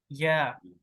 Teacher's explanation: या जबान को ऊपर कर लेते या। ये या, जुबान आप जरा दरमियान में आ जाती है, और मुंह के खाली से अदा होता है